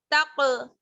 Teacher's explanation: تا کو جب آپ قاف سے ملائیں گے تو یہاں پر قلقلہ ہوگا، ٹھیک ہے. تق آواز لوٹ کر واپس آنی چاہیے